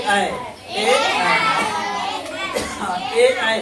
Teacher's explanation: कहेंगे कि ए का उच्चारण स्थान क्या है? तो कंठ तालु।